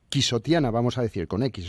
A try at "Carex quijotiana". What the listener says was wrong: Bueno, es con X, pero realmente se pronuncia con J, como J en castellano. Es lo mismo que México y pronunciamos México, sí.